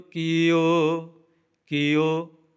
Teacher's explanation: ਕੀਓ ਊੜਾ ਖੁੱਲੇ ਮੂੰਹ ਵਾਲਾ ਹੈ। ਇਸ ਨੂੰ ਲੰਮਾ ਕਰਕੇ ਬੋਲਾਂਗੇ ਘੋੜਾ ਦੀਰਘ ਮਾਤਰਾ ਹੈ। ਇਸ ਕਰਕੇ ਉੜੇ ਹੋੜਾ ਲੰਮਾ ਕਰਕੇ ਬੋਲਿਆ